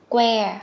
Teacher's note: Các con bật cái hơi ra chứ không phải là que. Nó không phải là môi là que mà nó là cờ, con bật hơi ra